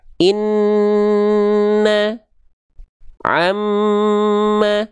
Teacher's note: kalau misalnya huruf nun dan mim dia kadarnya dua harakat dulu ditahan ghunah. Karena ada dengung dulu maka kita tahan